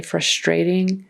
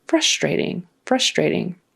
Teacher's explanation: in America we put the accent on the first syllable